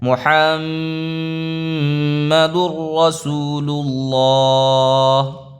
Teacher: تنوین کے بعد جب را آیا تو یہاں پہ ادغام را ہو رہا ہے، اس کو کہتے ہیں ادغام بلا غنہ، اس کے اندر غنہ نہیں ہوتا، ملا کے پڑھ لیتے ہیں۔